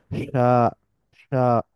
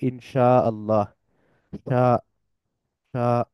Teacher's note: স্পর্শ করে টাচ করে বা কাছাকাছি যায় যাতে করে এয়ারফ্লোটা বা বাতাসের গতিটা পুরোপুরি বন্ধ হয় না বরং বাধাপ্রাপ্ত হয় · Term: শিনের উচ্চারণ